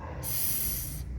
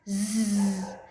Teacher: So S has no voicing. Z has voice. Z. So inside S sound and Z sound are also pair consonant.